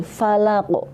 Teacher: ini itu kembali mentul. Itu qalqalah kubra